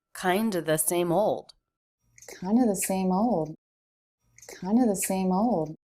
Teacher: kind of pronounced kinda with the word of being replaced with the schwa